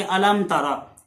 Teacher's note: तो हज़रात मोहतरम यहाँ अलामों के आखिर में मीम साकिन है और जो तारा का पहला हरफ है ता वो मीम और बा के अलावा है, तो ये बिल्कुल साफ पूरी पढ़ी जाएगी, इजहार के साथ पढ़ा जाएगा बगैर गुन्ने के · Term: इजहार शफवी